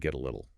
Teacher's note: that T turns into a soft D sound between vowels and links up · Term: flap T